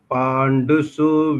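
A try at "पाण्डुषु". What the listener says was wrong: Not Su. Pandushu. Pandushu.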